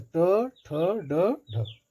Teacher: मूर्धन्य के लिए इसमें जीभ मुड़ती हो